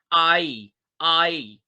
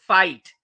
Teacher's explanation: इसको जब आप बोल रहे होते हैं तो टंग जो होता है ग्लाइड करती है। जैसे जब आप बोलते हैं आई आई, जैसे वर्ड इज फाइट, तो अ और ई का कॉम्बिनेशन है, तो आई। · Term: डिप्थोंग